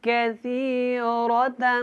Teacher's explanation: یہ جو کاف ہے اس کو باریک پڑھنا ہے، سا کو نرمی کے ساتھ ادا کریں